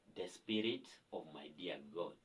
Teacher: I will perform the last line of the poem with a falling intonation to show finality.